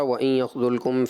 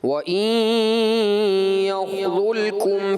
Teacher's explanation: دوسری بار جلد بازی میں غنہ نہیں کر سکے